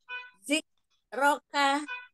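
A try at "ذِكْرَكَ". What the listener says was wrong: Zikroka. Hamsnya nggak kedengeran ya?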